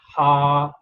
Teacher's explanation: We will pronounce it Ha because there is Alif added to it, so Ha sound will be stretched.